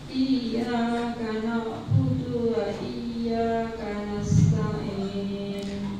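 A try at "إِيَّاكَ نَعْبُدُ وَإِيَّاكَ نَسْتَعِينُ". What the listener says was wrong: Iyyaka na'budu na'budu ainnya kurang jelas. Na'budu wa dunya sedikit memanjang. Na'budu wa iyyaka na'budu wa iyyaka nasta'in. Jadi tidak boleh na'budu wa i.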